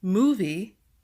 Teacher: For number 3, movie, the MO is stressed.